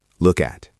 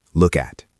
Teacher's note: Think about the K and the A. Link them.